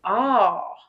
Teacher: The ah is more like it kind of rounds and opens at the end. Ah. It's like a saucer.